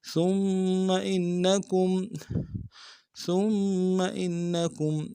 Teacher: ثا کو نرم سے ادا کریں گے، میم کے ساتھ ملانا، میم کے اوپر تشدید زور دیں گے ، ثم إنكم حمزہ کو نون ساکن کے ساتھ ملانا، نون